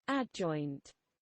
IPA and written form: ˈædˌdʒɔɪnt (adjoint)